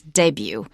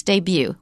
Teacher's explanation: usually you stress the last syllable. That's for American English. They don't do that in British.